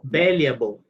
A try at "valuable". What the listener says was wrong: It's not complete a. It's like a mix between an a and an e. It's like when you go to the doctor and they say, open your mouth and say, you make that sound. Valuable. It's not valuable. Not a big a.